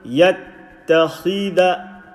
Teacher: Don't stretch the dal with the fatha.